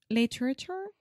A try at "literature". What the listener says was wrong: literature. you can almost just take out the middle A and say literature. Literature. Say litter. Richer. Literature. Yeah, that's a good way to think about it. Little Richard. Little Richard. Literature.